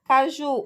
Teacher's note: Caju, o ju é a sílaba tônica.